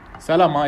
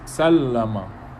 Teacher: it's called shadda basically it doubles the sound it makes two sounds one with the father and one with a sukun so basically